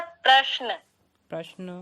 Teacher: शकार क्योंकि आधा है इसलिए उसका उच्चारण कम समय में होना चाहिए और नकार क्योंकि पूरा है उसका उच्चारण पूरा समय देना चाहिए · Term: अविलंबितम